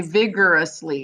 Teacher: you have the r sound at the end of this syllable and then you have the r sound at the beginning of the next syllable